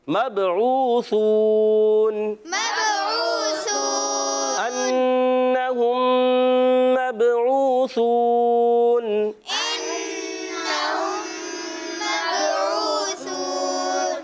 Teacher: عین کی ادائیگی حلق کے درمیان والے حصے سے واو ساکن سے پہلے پیش آ رہا ہے، واو مدہ ہے، یہاں پر بھی واو مدہ ہے۔